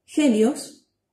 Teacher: consiste en hacer una pequeña aspiración cuando la pronunciamos